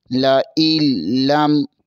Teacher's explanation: حمزہ زیر کو لام کے ساتھ ملائیں گے، یہاں پر حمزہ زیر کے بعد نون ہے، یہاں نون کو ساکن کر دیں گے اور لام کو میم کے ساتھ ملائیں گے۔